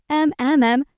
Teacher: that smooth, nasal sound is your M